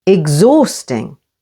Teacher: H can be silent after X, as in exhausting, with the stress on the second syllable.